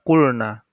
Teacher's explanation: lamnya itu dibaca jelas karena setelah lam sukun itu ada huruf nun. Jadi na-nya itu dibaca jelas. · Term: Izhar